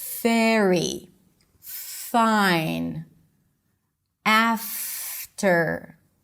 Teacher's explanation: For the F and V, and it's pretty consistent with the spelling, the bottom lip touches the top teeth and air passes. So you want to feel the air coming out as you pronounce it.